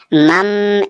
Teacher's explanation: میم، یہاں بھی اقلاب ہوگا، نون ساکن کے بعد با ہے اس لیے چھوٹا سا میم لکھا ہوا ہے، یعنی نون کو نہیں پڑھنا ہے، میم کو میم میں ملا کر پڑھنا ہے